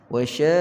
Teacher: Di sini mad lazim kalimi muthaqqal. Jadi panjang dulu 6 harakat, kemudian matikan qaf tanpa perlu kita lantunkan.